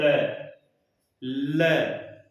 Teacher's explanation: जब वर्ण का उच्चारण करते समय हवा जो जिह्वा के दोनों पार्श्व भागों से हवा निकल जाए, दोनों पार्श्व भागों से हवा निकल जाए, और पार्श्व में एक ही वर्ण आता है ल, ल। उच्चारण करके देख लेना, हवा जिह्वा के दोनों साइड से निकलती है। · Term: पार्श्विक